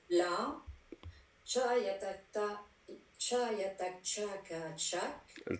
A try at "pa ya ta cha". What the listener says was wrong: En fait, je comprends que tu le dises comme ça, mais idéalement, pa yata cha, tu dis pa yata cha, parce que toi, tu as tout de suite dit cha, alors que c'est pa yata cha. Pour l'épellation, tu dois vraiment épeler toutes les étapes.